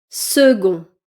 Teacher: Second, le C que vous voyez se prononce G.